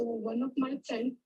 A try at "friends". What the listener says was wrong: I could hear friend only. So if you said friends, you should speak it more clearly.